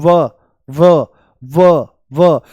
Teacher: दांत और होठ दोनों से इसका उच्चारण होता है। जैसे बोल दो व व व व, तो जो ऊपर वाले दांत हैं ये होठों से मिल जाते हैं। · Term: दंत ओष्ठ